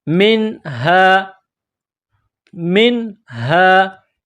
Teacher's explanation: نون ساکن کے بعد ہا ہے، حروف حلقی ہے، تو یہاں نون ساکن پر آواز ناک میں نہیں چھپائیں گے، غنہ نہیں کریں گے